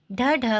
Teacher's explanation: ढ ढ को उक्षिप्त व्यंजन कहते हैं। इसका उच्चारण स्थान मूर्धा है।